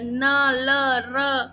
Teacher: फिर वत्सर्य, वत्सर्य होता है आपके जब आपकी जीभ की नोक आपके ऊपर के मसूड़े को टच करती है, न ल र, ठीक है, हमारी जो टंग की टिप है वो हमारे अपर दांत के मसूड़ों को टच कर रही है।